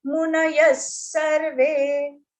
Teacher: Here visarga is pronounced as sa.